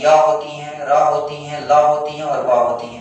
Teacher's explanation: ये व्यंजन ऐसे हैं जिनके उच्चारण करते हैं ना तो स्वास वायु जो है हमारे मुख के अंदर ही रहती है। पूरी तरह से बाहर नहीं आती है। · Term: अंतस्थ व्यंजन